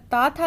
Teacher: तो ता वर्ग यह दंत के माध्यम से उच्चारित होता है। हमारी जिह्वा है जो दंत में टकराती है, इसलिए यह दंत वर्ग के अंतर्गत आते हैं।